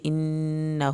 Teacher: انہ نون کی شد پہ ایک الف کے برابر دیر لگے گی ، الٹا پیش کی وجہ سے انہ اس کو کھینچ کے